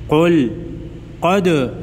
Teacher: دال ساکن کو ہلا کر پڑھیں گے کیونکہ دال حروف قلقلہ میں سے ہے